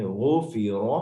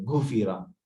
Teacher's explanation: آگے پڑھیں گے غفیر، موٹا غائن کی آواز آئے گی، گھفی نہیں کہیں گے. اکثر لوگ غین کو گاف پڑھتے ہیں